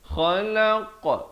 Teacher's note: kha di hujung kerongkong, khalaq, qaf di pangkal lidah.